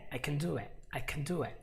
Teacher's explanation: There's no stress on the word can, but there's a lot of stress on the word do.